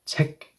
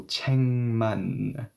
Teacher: Okay, so if I'm going to place 만, something has to change pronunciation-wise, right? Yes, the K will no longer have a snappy 책 K sound. Now it should sound like NG, right? The G consonant here now will sound like NG.